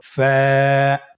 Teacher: ফায়ের মাখরাজ হলো নিচের ঠোঁটের প্যাড সামনের উপরের দুই দাঁতের আগার সঙ্গে লাগিয়ে উচ্চারিত হয়। · ফা হরফটি উচ্চারণের ক্ষেত্রে বারিক হবে এবং এক আলিফ টেনে পড়তে হবে।